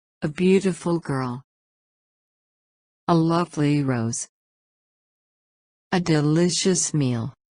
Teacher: Adjective phrases. The stress falls on the second word.